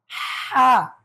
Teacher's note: এটার নাম কি হা গলায় চাপ দিয়ে বলতে হবে